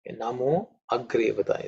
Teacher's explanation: even though there is sandhi, it does not join, connect. So there has to be minor pause.